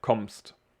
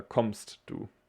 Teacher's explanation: we just say a long and strong m